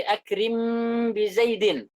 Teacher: Diitbaqus syafatain, kedua bibir itu dikatupkan. Hanya mungkin pada ba saja. Seperti apa?